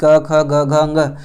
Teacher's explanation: क ख ग घ अंग ये जितने भी 5 वर्ण आए हैं उनका उच्चारण स्थान कंठ होता है